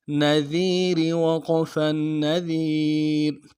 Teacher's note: دال کو باریک ادا کریں گے، را کو باریک ادا کریں گے